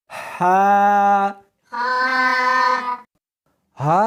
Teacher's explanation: اس حرف کو سختی کے ساتھ ادا کریں گے۔ جیم اس کو حلق میں سے نکالنا ہے اور ساتھ میں ہوا بھی ہونی چاہیے